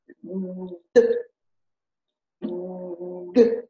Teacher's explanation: Il y a une vibration dans la gorge et ça éclate après. G, ça chante dans la gorge et ça éclate après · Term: consonnes qui éclatent